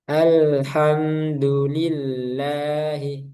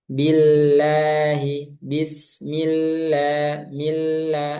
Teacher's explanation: lafaz jalal Allah yang dibaca tipis. Kapan? Ketika sebelumnya itu kasrah.